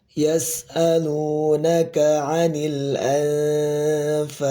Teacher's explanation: Di sini ada nun sukun bertemu dengan huruf fa. Maka dibaca ikhfa. Tetapi ikhfanya ikhfa tarqiq.